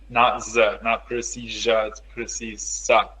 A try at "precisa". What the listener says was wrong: No, it's Z. Precisa. An S between vowels sounds like Z. The word to remember is casa, Exactly.